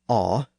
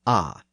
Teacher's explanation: But in the south, the sound shifted to more of an aw sound. So the sound was slightly raised in the throat region, and the lips became rounded a bit.